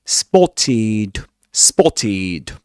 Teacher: So being a regular verb, we need to add to it ed d at the end. And um as it ends with a sound with a consonant sound t. The ed d ending is pronounced id.